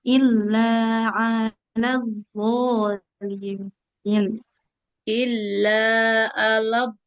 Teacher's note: huruf d ujung lidahnya tempelkan ke ujung gigi seri atas.